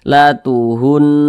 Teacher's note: Kita perhatikan huruf sebelumnya ada huruf nun bertasydid, sebelumnya ada huruf yang memiliki tanda baca dhammah, maka berarti huruf nun bertasydidnya ini hukumnya adalah gunnah musyaddadah. Nah, maka cara membacanya itu digunakan itu ya didengungkan. Jadi suaranya itu kita tahan, kita panjangkan sejenak.